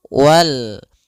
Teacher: Alif lam qamariyah, yaitu lamnya dibaca dengan jelas suara lamnya.